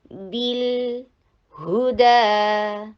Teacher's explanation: بالہدا، ہا کے پر ضمہ، ہونٹوں کو گول کیجئے. دال کے اوپر 2 حرکہ لانگ کر کے جبڑے کو کھولیے فتحہ کی ادا کرنے کے لیے